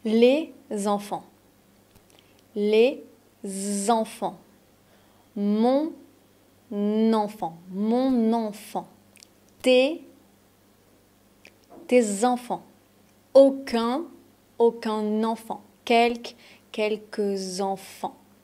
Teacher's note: on fait les liaisons entre le déterminant et son nom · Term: liaisons obligatoires